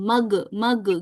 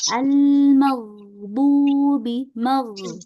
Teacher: Huruf ghain itu dia punya sifat rokhawah, ya, punya sifat rokhawah atau mengalir. Dia mengalirnya lebih banyak ya daripada sifat yang bainiyah tadi.